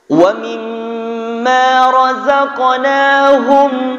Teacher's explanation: Wa mimma razaqnahum, mim bersukun, tidak boleh berdengung.